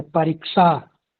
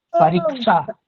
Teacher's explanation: परीक्षा छ नहीं होगा महोदय, केवल स का उच्चारण करिए ना।